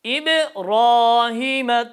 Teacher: tam kalın ra harfi bir Elif uzatıyor